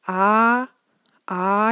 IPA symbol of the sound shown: a(:)